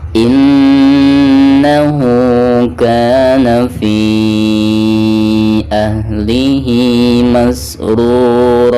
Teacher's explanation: Dan ketika diwakafkan di sini dihukumi mad iwad ya. Cara membacanya pertama hilangkan suara tanwin ra-nya, lalu digantikan dengan bacaan panjang 2 harokat.